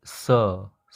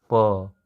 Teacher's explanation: हम लोग स बोल रहे हैं तो वाइब्रेशन नहीं हो रहा है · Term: वॉइसलेस प्लोसिव्स